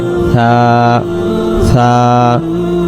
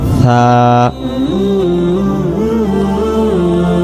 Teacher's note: জিহ্বার আগা থেকে নরম করে